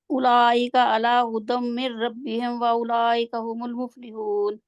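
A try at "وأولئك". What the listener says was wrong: واولئک کتنا لمبا تھا، آپ نے کیا ہوا ہے مد متصل، مد متصل ہے نا، 4 سے 5۔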